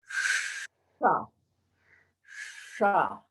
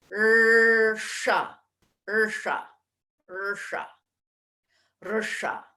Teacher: the tip of the tongue moves towards the hard palate, just behind the gums, which are behind the teeth, behind that ridge of the mouth. If you aim the tip of the tongue there, say sha, sha. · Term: third mouth position